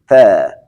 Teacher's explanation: حرف تا سر زبان و پشت دندان ها میزنیم میگیم تا